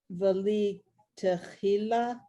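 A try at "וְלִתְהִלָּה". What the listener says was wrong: it's not a cha. It's not a cha. It's a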